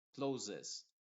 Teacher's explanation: Aquí las dos S están sonando como una Z. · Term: Z inglesa